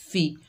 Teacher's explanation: फ़ा के नीचे ज़ेर बगैर खींचे पढ़ेंगे फ़ी। मजहूल होने से बचाएंगे। फ़े नहीं पढ़ेंगे, फ़ी पढ़ेंगे